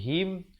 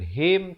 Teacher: mim mati yang ada tanda mati jangan dipanjangkan sempurnakan saja bunyi him bukan hem tetapi him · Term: Idhar syafawi